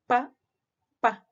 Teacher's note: como que el aire está ahí contenido y después lo soltamos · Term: oclusivas